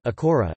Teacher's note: A single r is pronounced as an alveolar tap